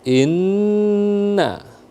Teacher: Inna ada tasdid di sana ya. Wajib al-gunnah ditekan dulu.